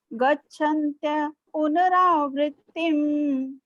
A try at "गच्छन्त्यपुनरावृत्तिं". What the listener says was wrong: गच्छन्त्य आपने गैप डाल दिया। हमारा य के साथ ही प वर्ड शुरू होना चाहिए। हमारा वर्ड है अपुनरावृत्ति।